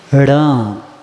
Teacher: ण बोलेंगे तो क्या होता है, जीभ उल्टी होती, खिंचाव आके ऊपर क्या होता है, तालु को दबा देता।